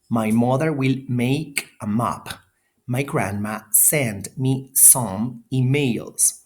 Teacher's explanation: airflow is redirected through the nose